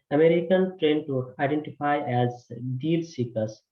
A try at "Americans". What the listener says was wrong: So just this word, Americans. It sounded like you missed that plural sound here.